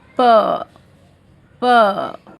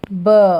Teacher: जब आप प प ऐसा आवाज़ निकाल रहे हैं तो आपका जो थ्रोट है वहाँ पे वाइब्रेशन नहीं है. ठीक है, तो जो प साउंड है वो वॉइसलेस है, लेकिन जो ब है उसमें वाइब्रेशन है. आप देखो जब स्टार्ट करोगे तो वाइब्रेशन फील होगा ब ब.